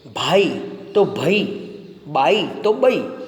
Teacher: આપણામાં છે એ લગભગ ઉત્તર લગભગ મધ્ય ગુજરાતની ચરોતરી બોલીમાં છે આઈ નો ઉચ્ચાર ઐ થાય છે